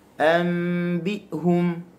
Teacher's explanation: Syiddah dia terus berlaku penyempitan. Okey, dia bertemu, dia tutup saluran suara tu, dia terus memutuskan suara. Pertemuan yang sempurna.